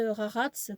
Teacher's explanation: ça se prononce avec un ra au fond de la gorge